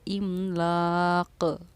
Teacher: تنوین اگر دو زیر کی ہو تو ہم جزم دے کر سانس توڑتے ہیں، اور جب قاف پر جزم آ جاتا ہے تو وہ حروف قلقلہ میں سے بن جاتا ہے، اسی لیے املاق، آواز کا لوٹنا قلقلہ کرنا کہلاتا ہے۔ یہ قاف ساکن ہمارا بن چکا ہے تو اسی لیے ہماری آواز لوٹی ہے